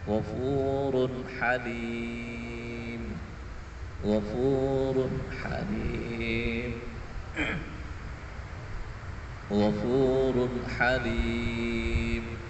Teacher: Di run di situ tanwin harus dibaca dengan jelas sebagaimana suara nun mati. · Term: izhar halqi